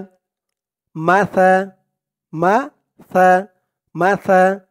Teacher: মাসালুল লাযীনা, মাসা মাসা মাসা, সার উচ্চারণটা কিন্তু একদম নরম পাতলা করতে হবে। জিহ্বার মাথা ওপরের দাঁতের মাথার সাথে লাগবে সার উচ্চারণটা করার সময়।